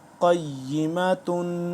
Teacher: قاف یا زبر قی، یا زیر یی، قی، قاف موٹا ہے، قی، میم زبر ما، قیمہ، تا دو پیش تن، قیمتن، تنوین آ گیا، دو پیش آ گئی تو تنوین ہے تو یہاں پہ غنہ بھی ہوگا، قیمتن۔ اگر وقف کریں گے تو کیا ہو جائے گا، قیمہ، گولتا آخر میں ہا میں کنورٹ ہو گیا، قیمہ۔